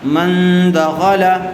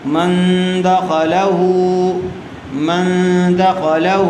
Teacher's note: نون ساکن کے بعد حروف اخفا میں سے دال آئی ہوئی ہے، اس لیے غنّے کے ساتھ اخفا کر کے پڑھیں گے